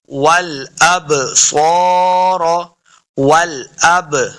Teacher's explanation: با حروف قلقلہ سے ہے، ساکن ہے، اس کو خوب واضح کرنا ہے۔